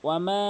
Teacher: 3 আলিফ টেনেছি মধ্যে মুনফাসিলের কারণে, উপরে চেকন চিহ্ন হওয়ার কারণে।